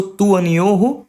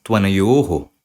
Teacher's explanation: A vakara will come in place of this u. So this u will cancel out. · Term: yana sandhi